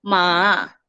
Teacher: Sebab kalau tengok dia punya simbol dekat sini, dia macam macam tu, macam V kan. So dia falling, dia rising. So cara sebutan dia akan jadi ma. Dia macam turun naik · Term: falling rising tone